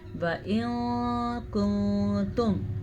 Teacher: نون ساکن کے بعد کاف حروف اخفاء میں سے ہے تو اخفاء ہو گیا